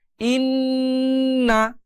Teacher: নাকের বাঁশি হতে একটা গুনগুন আওয়াজ বের করে এই জায়গাগুলোতে সময় দিয়ে গুন্নাহ করতে হবে।